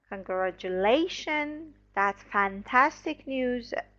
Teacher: about responding to good news the intonation somehow rises then uh comes down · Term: intonation patterns